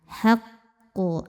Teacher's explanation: Namun di sini ada yang sedikit berbeda, ada tasydidnya, maka kita boleh sebut secara spesifik sebagai ee qalqalah akbar karena ada tasydid ya, maka dibacanya memantul tapi pantulannya tidak seperti biasa, enggak langsung keluar, melainkan kita sempurnakan dulu tasydidnya dengan cara agak menahan bunyi pantulan. Haququ, agak menelatkan bunyi pantulan.